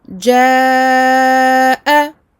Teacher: je fais 4 temps, pour bien montrer que c'est la hamza qui est la cause des 4 temps